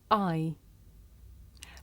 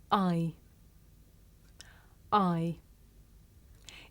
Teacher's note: this is a diphthong a double vowel sound the shape the mouth makes changes from the beginning of the sound to the end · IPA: aɪ